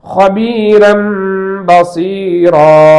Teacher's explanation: இந்த இன் என்ற ஒலி மீமாக மாற்றி இருக்கிறது. சோ இதற்கு இக்லாப் என்று பெயர்.